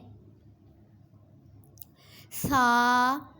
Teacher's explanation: زبان کا سرا اور اوپر کے دانتوں کے اندرونی کنارے سے ادا ہوتے ہیں۔